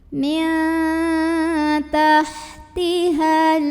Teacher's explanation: nun sukun dibunyikan samar-samar menuju huruf ta sambil ada dengungannya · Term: ikhfa aqrab